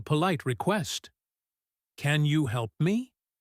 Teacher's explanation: If you say it with a rising intonation at the end, sounding hopeful, it is a polite request. "Can you help me?" If you say it with a falling intonation, sounding bored or demanding, it sounds like an order.